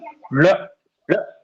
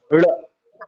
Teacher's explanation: पहले जीव ऊपर जाएगा मूर्धा में और फिर दांत को टच करेगा, ल, हाँ, ल, इसलिए ये द्विस्पृष्ट, दो जगह पे ये जो है जीव टच कर रहा है, द्विस्पृष्ट वर्ण इसका नाम है, ठीक है।